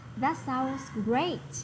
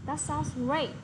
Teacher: hãy nhấn vào cái tính từ ở trong câu trả lời